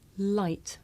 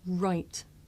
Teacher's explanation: I make the Le sound with the front part of my tongue behind my teeth and I make the r sound by making my lips come out and pulling my tongue back